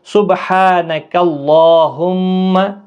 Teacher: سبحانک اللہم، اللہ کے لام کو پہلے پر پڑھنا ہے اور اس کے اوپر کھڑی زبر ہے، ایک الف کی مقدار کے برابر کھینچ کر پڑھیں گے